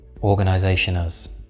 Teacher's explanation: you can almost make organisation and has seem as if they are one word